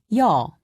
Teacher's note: imagine that you are trying to say ee and o very fast be sure not to pause in between pronouncing the two sounds